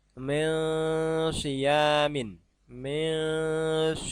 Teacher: Jadi bukan min. Kalau min itu jelas, tapi disamarkan, hampir masuk ke shad. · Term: ikhfa